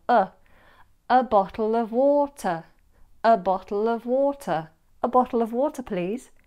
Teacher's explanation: Notice I also replaced the a with a schwa as well. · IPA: /ə/